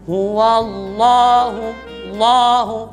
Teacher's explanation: Lam tasydid itu tidak dengung. Ingat, lam tasydid itu tidak ada dengung. Jadi lam ini dia tebal dan tidak dengung.